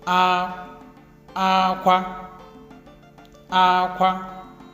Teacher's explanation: We have high, high tones. Aqua. Aqua. That is high, high.